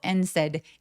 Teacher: and에 이렇게 접속사에 d 발음은 잘 하지 않습니다.